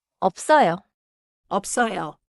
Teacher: If it sounds like 어서요, the lip stop disappeared.